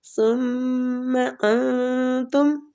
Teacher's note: ثم انتم، میم مشدد ہے، غنہ کریں گے، اور سا جو ہے یہ آپ کو پتہ ہے نرمی والا حروف ہے، اس کی سیٹی نہیں آنی چاہیے۔